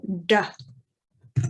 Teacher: Then you have something a little bit different, which is called a retroflex D. Retroflex meaning the tongue is a little bit further back on the roof of your mouth when you say the duh for this one.